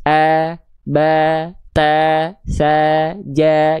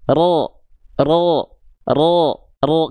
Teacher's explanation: kalau dia tebal, maka dia tidak akan terdengar seperti vokal A. Tapi dia akan terdengar seperti vokal O. Bukan vokal O, betul-betul O, plek ketik plek O, bukan. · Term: huruf yang tebal